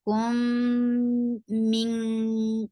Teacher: Kum idgham with gunna. So there will be akmal gunna. The sound should be in your nose for a longer time.